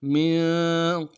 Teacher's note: میم کو نون ساکن کے ساتھ ملانا ہے، نون ساکن میں غنہ کریں گے